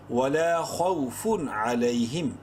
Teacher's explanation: یہاں پر تنوین کے بعد عین حروف حلقی میں سے ہے، اظہار کریں گے